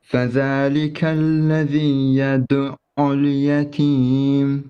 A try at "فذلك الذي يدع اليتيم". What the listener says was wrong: Don't stop too much on the ayn. I know you're trying to do the shadda. فذلك الذي يدع اليتيم. Don't say يدع. That's too much, okay? يدو.